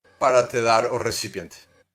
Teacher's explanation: De repente, ela fica mais nasal, abafada e um pouco mais aguda, quase como se ele estivesse falando com o nariz tampado. Isso ocorre porque se algo fica preso na cavidade nasal, como uma bola de bilhar, bloqueia o fluxo de ar entre nariz e boca.